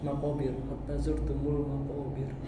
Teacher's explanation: Nah, kalau roh sukunnya sebelumnya di kasroh, ini tipis.